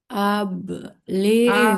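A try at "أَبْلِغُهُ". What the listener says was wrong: Nah, tadi ada yang ghoinnya dia terdengar seperti agak memantul. Ligu gitu. Ligu. nggak boleh begitu. Nah, harus dialirkan. Abelighu. Ya, jangan pantul.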